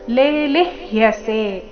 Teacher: ಮೊದಲನೇ ಅಕ್ಷರ ದೀರ್ಘ ಇದೆ ಲೇ, ಎರಡನೇದು ರಸ್ವ ಲಿ, ಮುಂದೆ ಅರ್ಧ ಪೂರ್ತಿ ಯ ಸೇರಿ ಸಂಯುಕ್ತ ಅಕ್ಷರ.